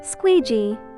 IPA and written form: 'skwi:dʒi: (Squeegee)